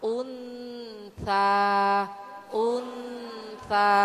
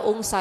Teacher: Jadi ibu masukkan suara Nun ke tsa · Lafat untha ikhfa ya Bu ya. Jadi itu bacaan samar dan dengung ya Bu ya, karena ikhfanya ikhfa ausat ya Bu ya.